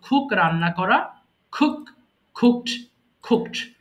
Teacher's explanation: যখন আপনারা ক পাবেন, কোনো ওয়ার্ডের শুরুতে ক পাবেন, তখন সেটাকে অবশ্যই খ এর মতো উচ্চারণ করব